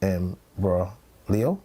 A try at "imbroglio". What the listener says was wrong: The G is silent. Yeah, it's like how the G is also silent in what is it, through?